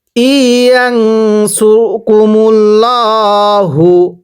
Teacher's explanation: এই যে এটাকে যদি কেউ মূল লা পড়ি পড়া শুদ্ধ হবে না, কারণ আল্লাহ শব্দের পূর্বে পেশ আছে। আল্লাহ শব্দ ল করে মোটা করে পড়তে হবে